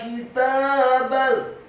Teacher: Kemudian kata kitabal, huruf kafnya dibaca tipis kasrah satu harokat, huruf ta-nya dibaca tipis fathah dua harokat karena harokatnya tegak. Kemudian huruf ba-nya dibaca tipis fathah cukup satu harokat saja karena setelahnya langsung disambung ke huruf lam yang sukun.